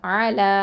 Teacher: ல வந்து அலிஃப் மது 2 அலிஃப் நீட்டணும்